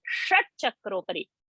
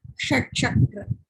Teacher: So this tongue has to touch the roof of the palate to get the sh sound. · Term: murdhani sh